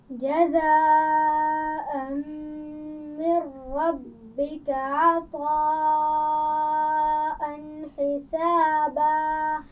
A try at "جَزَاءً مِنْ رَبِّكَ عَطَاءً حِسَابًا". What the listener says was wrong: جزاء یہاں بڑی مد ہے، اس کو خوب کھینچیے. عطا عین کے مخرج کا خیال رکھیے.